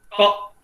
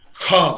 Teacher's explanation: आपके ओस्टर से, आपके लिप्स से 1 इंच की दूरी पर रख दीजिएगा, टच नहीं कीजिएगा, 1 इंच की दूरी पर दीजिएगा। क बोलिएगा, हवा जितना लगता है कम हवा लगता है, अल्प प्राण। ख बोलिएगा, ज्यादा हवा लगता है